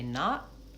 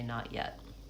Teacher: I go up to that T, I stop, hold there, I mark it, but I don't release the T. Not, and then yet has the ya glide.